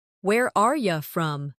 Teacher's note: In fast speech, are you often sounds like are ya.